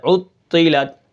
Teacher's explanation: ٹھیک ہے، آخری تا جو ہے وہ باریک ہے اور لام کو بالکل نہیں کھینچنا، یعنی لام کو تا کے ساتھ ملا کر پڑھنا ہے